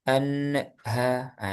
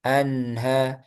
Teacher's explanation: sebelum ke ha jangan dilepas dulu jadi lepasnya itu langsung ke H anha langsung ke H anha kalau gini an ah itu kan dilepas duluan ha itu pantul anha anha coba anha tetap dikasih aliran anha Ha anha.